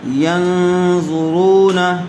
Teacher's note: پیش والے حرف کے بعد واو ساکن آیا ہوا ہے، اس لیے واو مدہ ہوگا، اس کو تھوڑا کھینچ کر پڑھیں گے